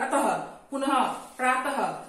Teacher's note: और विसर्ग, विसर्ग का उच्चारण जो है शब्द के आगे ह में होता है, जैसे अतः, प्रातः, पुनः, ये विसर्ग का उच्चारण जो है ह की तरह होता है। जैसे आप बोलेंगे अतः, पुनः, प्रातः, ये उच्चारण ह में कहलाता है।